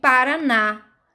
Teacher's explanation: Na é a última sílaba, então eu chamo de oxítona.